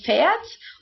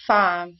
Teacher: Here fahren, to drive, fährt, oder du fährst, for example, but in the imperative form it's fahr. The a umlaut goes back to a normal a.